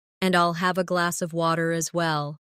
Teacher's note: In connected speech, glass of sounds like glass a.